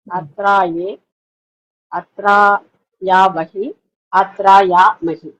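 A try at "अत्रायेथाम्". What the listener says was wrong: So here you need to focus Madhyama Purusha Dvivachana Rupam Atraye Tham. The Thakara Mahaprana, you just have to focus.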